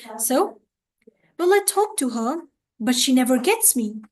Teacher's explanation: so we are first falling and then we are rising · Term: fall and Rise